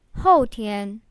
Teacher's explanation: 后, the fourth tone means after, and 天, the first tone means day or sky.